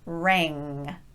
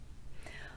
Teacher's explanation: For rang, we're ending it with the back of the tongue raising up.